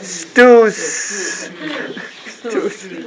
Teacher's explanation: So no vocal vibrating. No vocal cord.